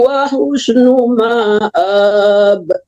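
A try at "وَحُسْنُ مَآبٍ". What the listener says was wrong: Ma-nya panjang, Uniwar. Ma-nya nggak panjang, A-nya panjang ya.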